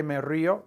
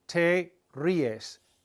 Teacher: There's an accent on the I to break up the diphthong.